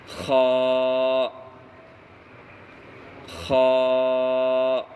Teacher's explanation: خا کا مخرج حلق کا شروع یعنی منہ کی طرف والا حصہ سے خا ادا ہوتا ہے